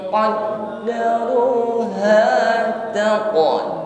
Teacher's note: menyamarkan kasrah tanwin dengan Q bunyi dengungnya harus tebal qar taq huruf q sukun jangan ragu-ragu kita tampakkan bunyi yang memantul atau sifat Qalqalah